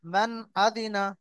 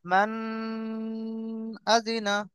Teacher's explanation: আরেকটা ওর আলিফের উপরে যখন জবর আসে জের আসে পের আসে পেশ আসে তখন আলিফ আর আলিফ থাকে না তখন হামজা হয়ে যায় এখানে নুন সাকিনের পরে হামজা এসেছে ছয়টি অক্ষরের মধ্য থেকে হামজা এসেছে এই নুনকে বিনা গুন্নায় জাহির করে তাড়াতাড়ি পড়তে হবে